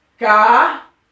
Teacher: Eu já sei que a palavra mais forte, a sílaba mais forte é ra, que significa que é uma sílaba tônica, certo? Então, se eu sei que a sílaba ra é mais forte, então eu sei que ela não é oxítona, ela é paroxítona, porque é na penúltima sílaba, certo?